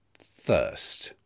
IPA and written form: θɜːst (thirst)